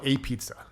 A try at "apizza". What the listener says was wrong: it's like a B. It's not like a pizza. the P is almost pronounced like a B.